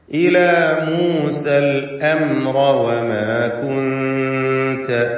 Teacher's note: അൽ അംറ എന്ന പദത്തിൽ സാക്കിനത്തായ മീമുണ്ട്. ആ മീമിന് ഇൽഹാർ ഷഫവിയാണ്, മണിക്കാതെ വെളിവാക്കണം.